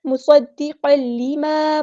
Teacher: فوراً یہ لام کے اندر مکس اپ کر دیں گے تنوین کی آواز کو اور غنہ نہیں کریں گے ، بلا غنہ ہوگا، یہاں پہ ادغام کامل ہو رہا ہے، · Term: ادغام بلا غنہ